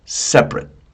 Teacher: the middle syllable disappears. It's not separate.